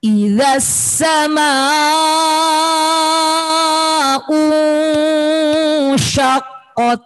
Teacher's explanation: Harus ada S-nya, harus ada desisnya.